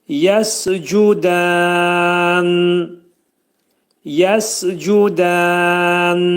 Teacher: Nunun hərfini izhar edin oxuyanda. Burunda deyin.